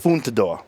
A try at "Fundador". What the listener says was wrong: Fundador. Fundador. Fundador. You say it with a T in it. You say it with a T. There's no T in there. Fundador. It's Fundador. It's like Fund. like Chow Mei Foon, Fundador.